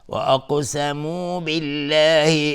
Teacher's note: قاف اینجا قلقله میخواد چون ساکنه و از حروف استعلاء است.